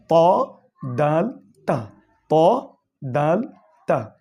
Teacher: 11 নম্বর মাখরাজ, জিহ্বার আগা সামনের উপরের দুই দাঁতের গুড়ার সঙ্গে লাগাইয়া।